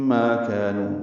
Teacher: الف مدہ 2 حرکات لمبا